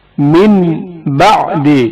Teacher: جب بھی نون ساکن یا تنوین با سے پہلے واقع ہوں نون ساکن یا تنوین کے بجائے میم پڑھا جائے گا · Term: اقلاب